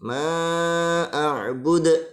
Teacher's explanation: Jadi ketika membaca atau mengucapkan a'bud itu harus dipantulkan dalnya. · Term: qalqalah